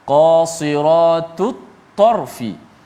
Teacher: Huruf yang bersamaan pada makhraj, ta dengan ta satu makhraj yang sama, hujung lidah di belakang gigi ataupun gusi atas.